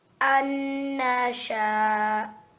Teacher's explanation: the noon mushaddad needs 2 seconds for it to be a proper nasalization